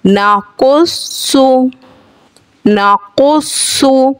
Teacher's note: नून ज़बर न क़ाफ स्वाद पेश कुस नाकुस स्वाद पेश सु नाकुसु नाकुसु। क़ाफ स्वाद दोनों हुरूफ मुस्तालिया हैं, पुर यानी मोटा करके पढ़ेंगे